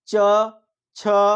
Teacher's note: Totally जो है जिह्वा का तालु पे टच हो रहा है।